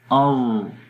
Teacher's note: اس کے اندر نہ تو بالکل ہی آواز مخرج میں بند ہو رہی ہے اور نہ ہی جو ہے وہ جاری رہتی ہے، بلکہ آواز میں توسط ہوتا ہے، مڈل، اس کو بنی درمیانی پوزیشن رہتی ہے آواز کی۔